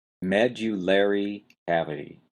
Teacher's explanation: You've got a strong stress on the first syllable, med, and then you've got a lesser stress on the third syllable, lair.